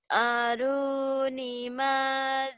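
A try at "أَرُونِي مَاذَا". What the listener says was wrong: Ru-nya panjang, ni-nya juga panjang. Ru, ni, ma sama. Da panjang. Panjang semua nih. Ru, ni, ma, da, ku. Tuh, panjangnya banyak.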